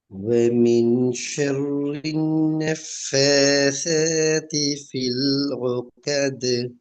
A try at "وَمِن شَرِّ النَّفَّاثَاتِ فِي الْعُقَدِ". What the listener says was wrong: திருப்பி போதுங்க, ஐன் கொஞ்சம் வரணும்.